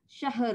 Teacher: Kalau dia syah nanti bunyi ha ada tapi ra tak ada. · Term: sukun mahdi